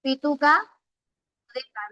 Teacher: oclusivos, cuando la salida del aire es como una explosión